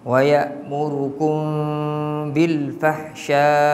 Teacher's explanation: Ikhfa syafawi ni dengung dalam kadar 2 harakat.